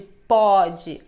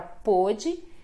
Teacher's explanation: Ele ganha o acento circunflexo, porque daí a pronúncia dele muda de pode aberto para pôde